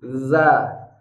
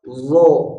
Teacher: huruf Zal ketika berharakat fathah maka bunyi fathahnya menjadi tipis dza tapi kalau do yang berharakat fathah maka bunyi fathahnya akan menjadi tebal